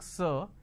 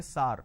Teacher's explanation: instead of a vowel sound ER they end up using a vowel sound ah